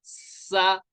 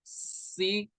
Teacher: سیٹی نکالنی ہے اور باریک پڑھنا ہے. سین زیر، سی، اس کو بھی باریک پڑھنا ہے اور سیٹی نکالنی ہے، سی.